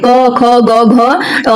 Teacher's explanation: कंठ से उच्चारित होंगे